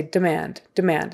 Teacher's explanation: fast that first syllable because the accent is on the or the stress is on the second syllable